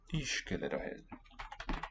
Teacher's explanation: And note that S here is a sh. That's when it's near a vowel letter I or E.